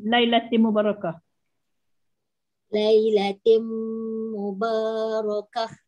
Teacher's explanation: Ta marbutah yang bertanwin bertemu dengan mim. Di situ kena baca dengan dengung ya. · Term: idgham ma'al gunnah